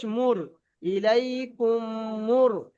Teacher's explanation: মিম সাকিনের পরে যদি মিম আসে তাহলে একটা মিম দ্বিতীয় মিমের সঙ্গে মিলিয়ে এক আলিফ গুন্না করে পড়তে হবে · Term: ইদগামে শাফাবি